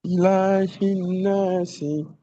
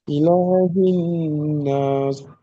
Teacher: জেরকে বাদ দিয়ে কি করে পড়তে হবে সকলে বলুন, সাকিন করে পড়তে হবে।